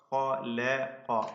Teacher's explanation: ഖലഖ, അതിന്റെ ഇടക്ക് ലാം ഇസ്തിഫാലിന്റേതാണ്, തർക്കീഖ് ചെയ്യുക.